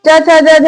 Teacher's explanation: च छ ज झ, यहाँ सबका उच्चारण स्थान क्या है? तालु है।